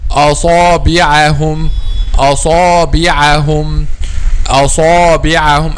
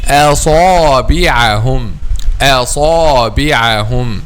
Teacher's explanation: If we will make a wave for the movement of the back of the tongue, it will be like this. The back of the tongue is not raised, and then back of the tongue is raised. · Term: light letter